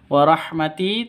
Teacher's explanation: ti-nya panjang karena ada ya mati diawali dengan kasroh atau ya mati sebelumnya berharokat kasroh. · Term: mad asli